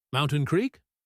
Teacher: Then he asked, "Mountain Creek?" He didn't say, "Are you going to Mountain Creek?" He just said the name of the destination with a rising intonation.